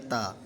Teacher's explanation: زبان کی نوک اور اوپر کے دانتوں کی جڑ سے ادا ہوتے ہیں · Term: حروف نطعیہ